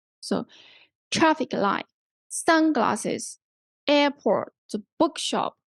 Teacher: The stress, anyway, the stress is on the first part of the word.